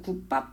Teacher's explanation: 안 울림 소리하고 안 울림 소리 만나서 그 중에 하나의 안 울림 소리가 된소리로 바뀌는 거